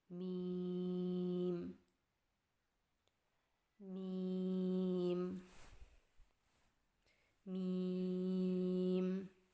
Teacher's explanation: میم کی ادائیگی میں ہونٹوں کے خشک حصے کو قدر نرمی سے ملا کر باریک آواز میں پڑھیں